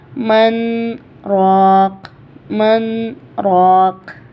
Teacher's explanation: سین فور سکتہ، مطلب سانس ٹوٹے بنا آگے بڑھنا ہے ہمیں، آواز کو روکنا ہے لمحے بھر کے لیے اور پھر ہمیں آگے بڑھنا ہے